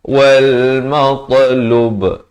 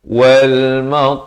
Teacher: diwaqafkan, diberikan lantunan qalqalah kubra di sini dengan sekurang-kurang 2 harakat, jangan kurang dari itu.